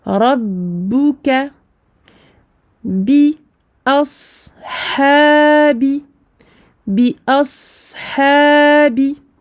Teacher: Donc le A. La hamza est aminci, le sad est mufakhama, emphatique. Donc on emphatise bien le sad.